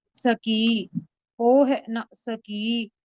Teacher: ਸਕੀ ਪੋਲਾ ਬੋਲਣਾ ਸਕੀ ਕਸ ਕੇ ਨਹੀਂ ਬੋਲਣਾ ਅਧਕ ਨਹੀਂ ਲਗਾਣੀ